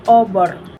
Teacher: huruf o bunyi vokal belakang bulat separuh rendah